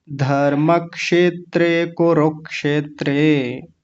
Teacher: हल्का सा क की आवाज आनी चाहिए धर्म के बाद में